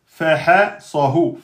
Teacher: Le sad, il est emphatique.